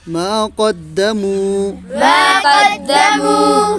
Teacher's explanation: جب کسی حرف پیش ہو اور واو کے اوپر سکون ہو تب واو مدہ ہوتا واو ساکن سے پہلے پیش ہو تو واو مدہ مدہ ہوتا ہے. اس واو کو کیا کرنا ہے؟ ہے لمبا کرنا ہے. کھینچ کر پڑھنا ہے.